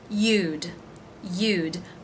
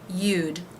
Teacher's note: the y consonant sound the u as in boo and the d sound